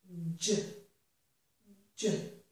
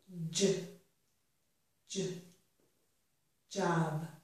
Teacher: J, j. So I'm beginning with a little bit of a d. My tongue is touching the top of my mouth. I have stopped the air. Then I release the tongue and release the air to make zh, j, j, job. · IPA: /dʒ/